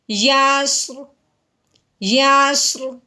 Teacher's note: پیچھے والے حرف پہ زبر آنے کی وجہ سے اب ہم نے را کو موٹا کر دینا ہے